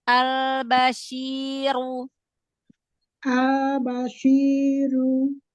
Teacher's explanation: Ru, jangan ada hamzah di akhir harokat.